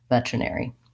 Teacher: this ARY is an air diphthong. I have to have enough length there to get all of those sounds